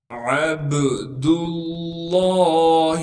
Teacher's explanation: عین کو با ساکن سے ملائیں گے، با پر قلقلہ کریں گے ساکن ہونے کی وجہ سے۔ دال کو لفظ اللہ سے ملا دیں گے کیونکہ لفظ اللہ کے دوسرے لام پر تشدید موجود ہے، اور لفظ اللہ کے لام سے پہلے دال پر پیش ہونے کی وجہ سے لفظ اللہ کے لام کو موٹا کر کے پڑھیں گے۔